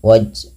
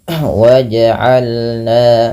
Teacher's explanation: pantulkan bunyi suara pada lafal huruf Jim yang berharakat sukun